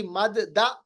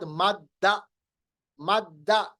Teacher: दो दाल हमने आपस में मिलाए, उनको मदगम किया, उनका इदगाम किया।